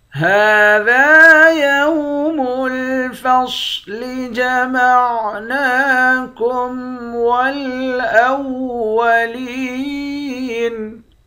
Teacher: ہاں پر کھڑا زبر ہے، ایک الف کی مقدار کھینچیں گے، دال کے بعد الف ہے، اس کو بھی ایک الف کی مقدار کھینچ کر پڑھیں گے، صاد کو موٹا پڑھیں گے۔ نون پر کھڑا زبر ہے، اس کو ایک الف کی مقدار کھینچ کر پڑھیں گے۔ لام کو یا کے ساتھ ملا کر یا کو بھی ایک الف کی مقدار کھینچ کر پڑھیں گے، آخر میں نون ساکن ہے۔